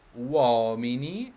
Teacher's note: It's the second to last stress syllable, or second to last syllable is stressed.